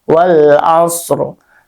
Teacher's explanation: Dan ia namanya waqaf isyarah ya. Jadi rnya tidak dibaca sempurna tapi dibaca dengan setengah harakat.